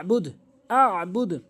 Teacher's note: এখানে আইনটি হলকের মাঝখান থেকে আইন উচ্চারণ করতে হবে। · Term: আইনের উচ্চারণ